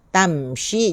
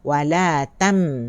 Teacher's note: Bila kita sebut mim, sama ada mati ataupun hidup, mesti ada bunyi telengung. Telengung dalam hidung dia.